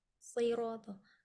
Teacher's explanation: Jadi tebal, rahang tetap kita buka biar dia dapat fathahnya.